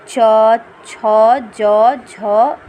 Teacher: तालु से है च वर्ग की ध्वनियाँ